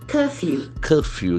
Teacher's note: pronunciation the letter c has got a hot sound curfew curfew the middle R is silent and actually the first letter has got a sound also curfew